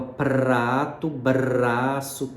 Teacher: todos esses sons que tem esse R vibrante em que a ponta da língua vibra a gente percebe como que a língua tem uma participação contundente